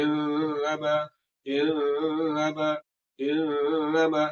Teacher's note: یہاں پر جو غنہ ہوگا اس غنہ کی مقدار سب سے زیادہ ہوگی، یہ سب سے لمبا غنہ ہوگا۔ یہ نون مشدد کی مثال ہوگی۔